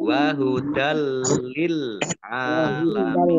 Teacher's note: fathah tanwin bertemu dengan huruf lam, bacaan idgham bila gunnah, masuk dengan tidak mendengung. Ya, langsung masuk ke huruf lam tapi tidak mendengung.